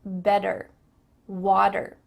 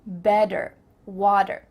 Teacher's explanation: In American English, a T that's between two vowel sounds, it doesn't always have to be a vowel, but between two vowel sounds is going to change to a D.